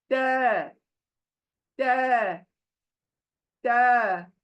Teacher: हमारी जबान जो है ना, वो सामने के जो दांत हैं बड़े, उनके जड़ों को टच करती है। ये जबान हमारी जबान को, दांतों को टच करती है पीछे से।